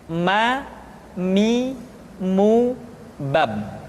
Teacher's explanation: huruf ma diucapkan dengan cara merapatkan dua bibir.